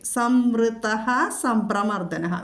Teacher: വിസർഗം കഴിഞ്ഞിട്ട് സാ വന്നതുകൊണ്ട് അവിടെ സ് എന്ന് വിസർഗസ്ഥാനത്ത് നമ്മൾ ഉച്ചരിക്കുന്നു. അല്ലെങ്കിൽ സാ ഇരട്ടിച്ച്, അതായത് കടുപ്പിച്ച് ചൊല്ലണം അവിടെ സം.